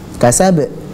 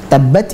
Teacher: yang sukun langsung memantul sedangkan yang tasydid itu ada jeda sejenak kemudian baru dipantulkan